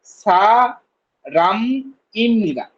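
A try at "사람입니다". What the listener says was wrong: উচ্চারণ ঠিকই আসে, সারা মিমনিদা। খুব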